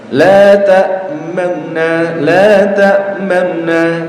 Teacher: La ta'manna, la ta'manna. Ya, jadi antum baca la ta'manuna, tapi nunya tidak dibaca jelas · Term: raum